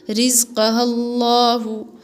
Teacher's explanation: تو یہ لام اللہ کا ہے، اور اس اللہ کے لام سے پہلے اگر زبر آتا ہے تو وہ پور پڑھا جاتا ہے، یعنی موٹی آواز میں پڑھا جاتا ہے